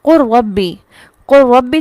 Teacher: قُل ربی جب ہم پڑھ رہے ہیں تو لام کی کوئی ساؤنڈ، کوئی صفت، کچھ بھی اس میں عمل دخل نہیں ہے۔ تو یہ ہے ادغام تام، کہ مدغم فیہ میں اس طرح داخل ہوتا ہے، یوں ملتا ہے کہ اس کی کوئی صفت باقی نہیں رہتی، وہ کمپلیٹ اس کے اندر شامل ہو جاتا ہے، اسے کہتے ہیں ادغام تام۔